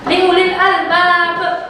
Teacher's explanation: Qalqalahnya adalah qalqalah kubra. Qalqalah kubra. Jadi harus dibaca pantul.